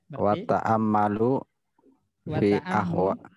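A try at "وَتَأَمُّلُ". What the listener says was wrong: Mimnya dhammah.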